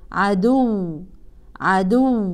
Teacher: اما وقفا طبعا يلغي التنوين ونقف على الواو بالتشديد